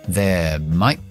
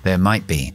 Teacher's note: La T de might la voy a glotalizar. Voy a hacer una parada.